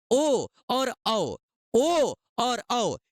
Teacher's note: इनका उच्चारण कंठ से और ओष्ठ से दोनों से होता है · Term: कंठोष्ठव